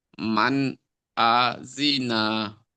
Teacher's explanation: নুন সাকিনের পরে হরফে হালকি 6টি অক্ষরের মধ্যে হামজা এসেছে, তাহলে নুন সাকিনের আওয়াজটা কি, আওয়াজটা গুন্না না করে জাহির করে তাড়াতাড়ি পড়তে হয় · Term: ইজহারে হালকি